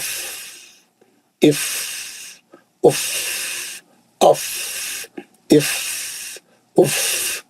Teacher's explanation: खाली नीचे के होंठ पे दांत रख के पीछे से हवा मारना बस। इफ उफ, आवाज नहीं, उफ जोर का आवाज ही नहीं आना, खाली हवा का थोड़ा आवाज आना। · आपका फा बिल्कुल सही होना चाहिए, आवाज नहीं आना चाहिए, खाली होठों के पीछे से हवा निकलने की आवाज होना चाहिए।